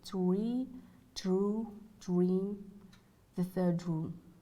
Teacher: D, dental, before the and th, like in words eighth, add the, said that. D, post alveolar before r